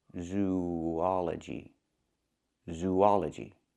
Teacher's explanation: Link these two vowels, zoology. There's a slight w sound linking the two vowels, zoology, zoology.